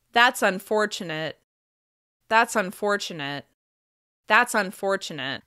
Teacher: the overall intonation is flatter and there's a drop at the end